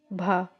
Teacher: ओष्ठ महाप्राण घोष व्यंजन वर्ण का उदाहरण